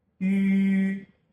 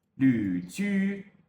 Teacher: The tongue position for ü is essentially the same as that of i. In both cases, the tongue is held in the highest and most fronted position possible. The main difference is the lip shape.